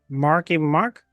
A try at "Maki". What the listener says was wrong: No, there's no R in this.